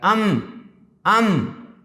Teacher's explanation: मगर आप कहिए, जैसे मीम कह रहे हैं नहीं समझ में आ रहा है, अब आप कहिए अम, तो समझ में आ गया, यानी दोनों होठ और नाक से आवाज़ आ रही है